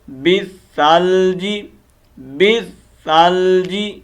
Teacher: اللہم اغسلنی من خطایای، من خطایای، من خطایای، بالثلج، بالثلج، بل، اصل میں بل، لام کو نہیں پڑھیں گے، ٹھیک ہے. یہ لام گر جائے گا، با کو ہم ڈائریکٹ سا کے ساتھ کنیکٹ کریں گے کیونکہ سا مشدد ہے.